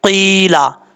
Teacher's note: قاف یا زین قی، قاف حروف مستعلیہ میں سے ہے، پر پڑھا جائے گا، اس کا مخرج ہے زبان کی جڑ اوپر والے تالو کے نرم حصے سے لگے تو قاف پڑھا جاتا ہے۔ قیلا، یا مدہ ہے، ایک الف کی مقدار لمبا کر کے پڑھیں گے، یا ساکن سے پہلے زیر ہو تو یا مدہ ہوتا ہے۔